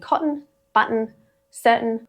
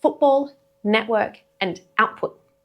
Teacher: the glottal t is the sound, a throat catch that replaces a regular t in specific contexts in Australian English.